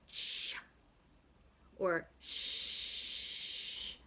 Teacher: The tongue is close to the hard palate. That's called a palatal sound.